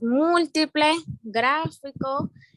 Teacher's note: tienen el acento en la ante penúltima sílaba